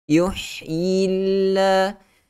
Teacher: Kalimah Allah lafzul jalalah dibaca dengan nipis pada huruf lam itu kerana sebelum dia berbaris di bawah.